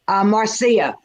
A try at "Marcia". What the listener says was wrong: Nope, it's Marcia. Marcia. It's like it's like a song.